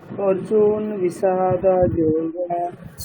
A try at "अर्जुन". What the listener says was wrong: অর্জুন হবে না, ঠিক আছে, অর্জুনা।